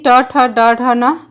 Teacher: जब जिह्वा की उल्टी हुई नोक का निचला भाग मूर्धा से स्पर्श करता है, ऐसी स्थिति में उत्पन्न ध्वनि को मूर्धन्य व्यंजन कहते हैं